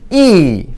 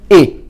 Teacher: 입술을 옆으로 벌리고 입술에 힘을 주고 E, 밑에 것은 입술에 힘을 빼고 턱을 약간 내려서 E.